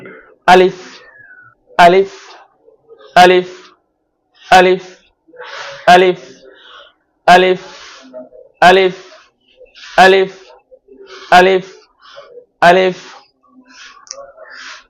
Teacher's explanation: এই আলিফটা উচ্চারণ করতে হয় গলার শুরু থেকে, অর্থাৎ হলকের শুরু জায়গা থেকে এই আলিফটা উচ্চারণ করতে হয়, আওয়াজগুলো ভিতর থেকে আনতে হয়, অনেক জোরে উচ্চারণ করতে হবে।